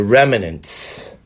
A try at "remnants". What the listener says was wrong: There's no extra vowel in remnants. It's REMNANTS. Remnants.